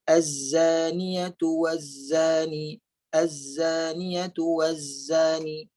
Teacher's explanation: Huruf sin dan huruf zai ada bunyi desiran lebah.